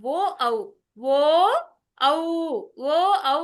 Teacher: తర్వాత పెదాలు కూడా తగులుతున్నాయి, ఔష్టం పెదాలు రెండూ తగులుతున్నాయి కాబట్టి ఓష్ట్య కంఠోష్ట్య అంటే కంఠము ఓష్టము రెండు స్థానాల నుంచి ఓ ఔ అనే అక్షరాలు వస్తున్నాయి కాబట్టి వాటిని కంఠోష్ట్య అంటారు.